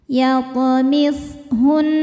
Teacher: Nun tasydid dihukumi ghunnah musyaddadah karena nun bertasydid. Cara bacanya didengungkan.